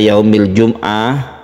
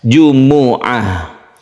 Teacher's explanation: kita itu terbiasa Yaumul Jumat itu disukun mimnya padahal dia itu bukan sukun tapi dia adalah dhommah jadi dombanya harus ketara harus diperjelas